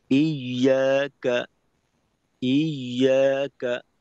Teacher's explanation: একটা হলো ইয়াকা নাবুদু, ইয়াকা নাবুদু, তো এখানে নুনে আমি একটু জোর দিয়ে তারপর উচ্চারণ করলাম ইয়াকা, ইয়াকা, এইটুক পড়ার মাঝে আওয়াজের উচ্চতা একরকম। ইয়াকা নাবুদু, নাবুদু, নুনে আওয়াজের উচ্চতা হালকা একটু বাড়ানোর মাধ্যমে আলাদা করলাম নাবুদুকে। · নুনে আওয়াজের উচ্চতা হালকা একটু বাড়ানোর মাধ্যমে আলাদা করলাম নাবুদুকে। তো এইখানে যদি আমি এমন করি ইয়াকা নাবুদু, ইয়া, এখানে এক উচ্চতায় রাখলাম, কানা বুদু এটাকে আলাদা উচ্চতায় নিয়ে গেলাম, এই ক্ষেত্রে কিন্তু সমস্যা।